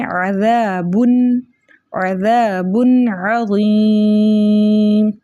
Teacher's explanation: عین کو اس کے مخرج سے پڑھیں گے، یعنی وسطی حلق سے پڑھیں گے، درمیانی حلق سے پڑھیں گے، کیونکہ اگر ہم نے عین کو اس کے مخرج سے نہ پڑھا تو عین جو ہے وہ حمزہ میں تبدیل ہو جائے گا.